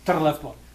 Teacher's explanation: the double R is a very strong trill